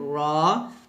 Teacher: র টা উচ্চারিত হয় জিহ্বার আগার উল্টা পিঠ উপরের তালের সঙ্গে লাগিয়ে